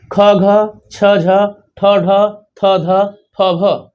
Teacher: प्रत्येक वर्ग का दूसरा और चौथा, जिसमें ह जैसे ज्यादा ध्वनि निकलती है, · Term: महाप्राण